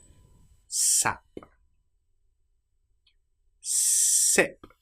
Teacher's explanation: How do you make the sound? Teeth close together, air being pushed through S, and the tongue quite close behind the teeth.